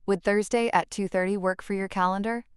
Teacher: The rising intonation on Thursday followed by the falling tone on the time shows polite inquiry followed by specific information.